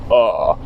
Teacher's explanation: So if I say I like something it's like it like just goes down and then says and really the sound you want to make it's kind of like a little creaky in your throat. It's like a frog is in your throat maybe you could say it just goes from a normal. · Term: third tone